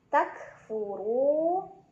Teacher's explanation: Takfuru, ro dibaca secara tafkhim karena huruf ro-nya berbaris dan barisnya di atas. Jadi ro-nya dibaca secara tebal ya. Tebal itu adalah pangkal lidah kita terangkat. Takfuru, ru mad tabi'i.